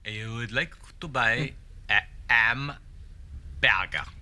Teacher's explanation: H is being dropped before vowels. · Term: H dropping